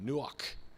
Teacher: say as you turn to the person next to you because you're almost spitting out that k sound at the end you know almost like clearing the throat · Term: gutturals